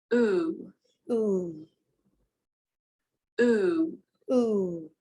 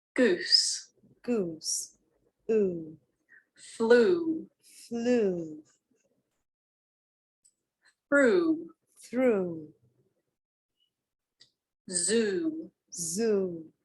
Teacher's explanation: To make this sound, your tongue is high in the mouth and at the back. The lips are rounded, so they're like this, and not like this. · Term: closed back rounded vowel